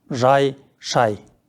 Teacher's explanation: ж-ш дыбыстары мен үнді и дыбысының аралығында а дыбысы тұрса, ж-ш дыбыстары жіңішкеріп, дауысты дыбысты жіңішкертіп жібереді. Бірақ жазуда а дыбысы сақталып жазылады.